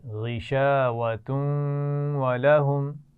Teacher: جب ملائیں گے تنوین کو واو کے ساتھ تو غنہ بھی کریں گے